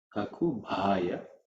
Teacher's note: Bha is the fourth letter in the pa varga, so it has to be aspirated.